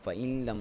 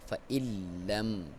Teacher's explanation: لام کے اوپر شد ہے دبا کے